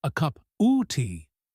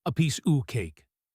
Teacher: A piece of cake becomes a piece oo cake. The v sound might even disappear turning into just a schwa sound connecting the two nouns.